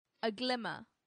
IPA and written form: əˈɡlɪmə (aglimmer)